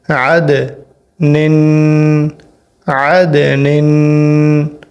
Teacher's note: نون ہے یہاں پر، اور نیچے اس کے دو تنوین ہیں، دو زیریں ہیں، یہاں پر غنہ ہوگا۔